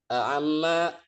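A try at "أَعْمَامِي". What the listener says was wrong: Ainnya di situ disukunkan, ainnya disukunkan. Kan di situ ada ya apa? Ada ya sukun ya.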